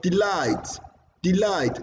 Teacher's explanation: Light is higher, longer than D.